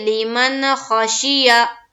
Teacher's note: نون ساکن کے بعد حروف حلقی میں سے خا آئی، تو نون کی آواز کو ظاہر کر کے بلا غنہ کے جلد پڑھیں گے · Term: اظہار حلقی